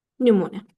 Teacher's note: Təbii ki, dedik ki, üz səsi uzun tələffüz olunmuşsa, mən uzanmanı üz səsinə qoya bilmərəm. Məndə uzanma hadisəsi ikinci hecada özünü göstərir. Yəni, u səsi, u sait səsi uzanır.